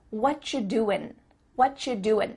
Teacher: the end of the word doing, that G, also gets cut out.